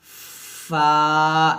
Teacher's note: করব অবশ্যই উপরের দাঁত নিচের ঠোঁটের সাথে লাগিয়ে আমরা উচ্চারণ করব অর্থাৎ সামনের উপরে দুই দাঁত নিচের ঠোঁটের সাথে লাগিয়ে আমরা ফাটে উচ্চারণ করি